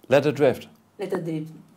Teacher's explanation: Let her. And I'm also changing the T to the D, like an American.